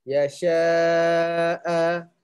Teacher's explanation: Kalau hamzah ni bagi dua atas, walaupun tak ada alif kat belakang dia, dia a juga baca. 2 harakat.